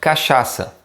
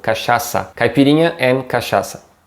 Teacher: the CH here sounding more like an SH in English. And the last syllable has this C with a little leg thing underneath, and it's pronounced like a double S.